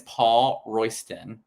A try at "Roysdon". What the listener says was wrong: It's not Paul Roysdon. It's Paul Roysdon. There's a difference. You're saying a T and it's a D. No, you're adding a T-O-N.